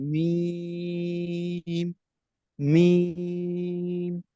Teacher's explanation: میم دونوں ہونٹوں کے خشک حصے سے زیادہ ہوتا ہے.